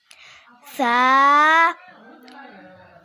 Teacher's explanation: ہم نے جب سا پڑھنا ہے تو سیٹی نہیں بجنی چاہیے،